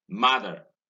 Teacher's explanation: stress falls on ma, and therefore the next syllable is unstressed.